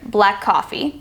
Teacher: There are multiple areas that these words are linked. At the end of black and the beginning of coffee, the CK and the C blend together.